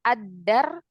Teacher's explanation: huruf Syamsiah berarti lamnya tidak dibaca ya karena hilang langsung masuk ke dalnya